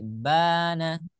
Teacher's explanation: dibaca panjang dua harakat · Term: fathah berdiri